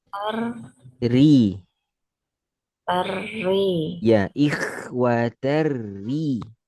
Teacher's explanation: tar tipis karena masuk ke ri yang tipis